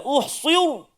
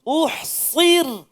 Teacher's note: Nak tipiskan ra tapi tak tipiskan sad.